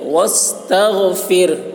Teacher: تغ غین کو حلق سے ادا کریں گے.